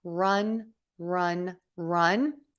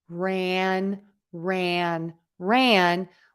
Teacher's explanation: has that short closed relaxed uh run run run as opposed to ran ran ran which is made with a wider open mouth for that ah sound okay all right next question I have